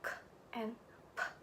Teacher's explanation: Sounds like k and p are minus coronal because they do not use the tongue tip.